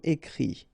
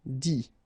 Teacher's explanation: phonetically you pronounce i because final t is not pronounced